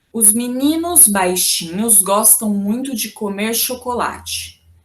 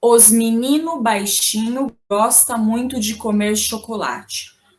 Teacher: na linguagem mais informal é comum que se pronuncia o s de plural apenas na primeira palavra o artigo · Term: plural informal